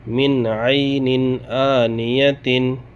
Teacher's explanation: نون ساکن اس کے بعد عین، یہاں بھی اظہار ہوگا، نون ساکن کو ظاہر کر کے بلا گنہ جلد پڑھیں گے